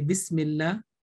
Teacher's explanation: if the previous letter with a kasra like a bismillah it will be pronounced with a thin sound